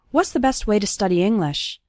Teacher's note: You can see that the word to becomes ta, and it's just barely pronounced at the end of way.